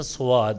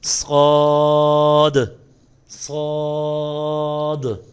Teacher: اکثر بچے دیکھے ہیں یہاں پہ پڑھتے ہیں سواد واو کی آواز پیدا کرتے ہیں تو اس حرف کو ادا کرتے وقت واو کی آواز نہیں پیدا ہونی چاہیے